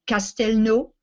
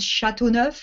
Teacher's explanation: what you hear at the beginning is the difference between C and sha and this is called palatalization · So for those of you who maybe have traveled in Europe, or in the north of France, things are called Châteauneuf, Newcastle, but in the south of France, the same place name called Newcastle is called Castelnau. Well, what you hear at the beginning is the difference between K and Sh, and this is called palatalization. Castel is the original Latin, which you find in Spanish.